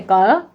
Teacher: का कंठ से बोलते हैं इसलिए कंठ वर्ण कहलाते हैं।